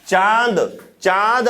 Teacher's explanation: अनुनासिक मतलब नाक प्लस मुख दोनों से हवा बाहर निकलती है। · चांद आप बोलेंगे तो नाक से भी ध्वनि आएगी और मुख से भी आएगी, पूरी तरह नाक से नहीं आएगी।